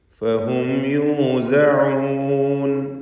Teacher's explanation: ഫഹും സാക്കിനത്തായ മീമും ശേഷം യാവും ഇദ്ഹാർ ശഫവി നൽകി മണിക്കാതെ മീമിനെ വെളിവാക്കി ഉച്ചരിക്കേണ്ടതാണ്